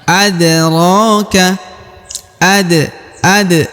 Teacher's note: dipantulkan karena dia berharakat sukun ya dipantulkan atau diqalqalahkan